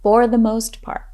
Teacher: notice how we emphasize the words most part